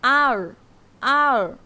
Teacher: হবে না এটা কি বলতে হবে আর আর বলতে হবে আর জিহবার মাথাটা উল্টো হয়ে উপরের তালুতে লাগিয়ে বলতে হবে আর আর জিহবার মাথাটা উল্টো হয়ে উপরের তালুতে লাগিয়ে বলতে হবে · জিহ্বার মাথাটা উল্টো হয়ে উপরে তালুতে লাগিয়ে বলতে হবে